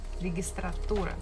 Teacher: Stress falls on tura, registratura.